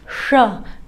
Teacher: जिह्वा को उलटकर ये गहरे भाग को जब स्पर्श करके इसका उच्चारण होता है तब उसे मूर्धन्य श कहते हैं